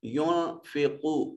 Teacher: قاف حرف مستعلیہ ہے، صفت استعلاء کی وجہ سے اس کو مفخم یعنی موٹا کر کے پڑھا جائے گا۔ واو ساکن ما قبل مضموم واو مدہ ہے، ایک الف کے برابر اس کو لمبا کر کے ادا کریں گے۔ حرف شفوی ہے، یہ ہونٹوں کا وہ حصہ جو باہر کی طرف ہوتا ہے ان کو اندر کی طرف مولڈ کر کے پڑھتے ہیں۔ · نون ساکن کے بعد فا حروف اخفا میں سے ہے، نون کو اپنے مخرج میں چھپا کر پڑھیں گے